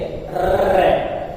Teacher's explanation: तो प्रकंपित, लुंठित या कंपन जात, इससे तात्पर्य क्या है कि वे वर्ण जिनका उच्चारण करते समय जिह्वा लुढ़कती हुई सी प्रतीत होती है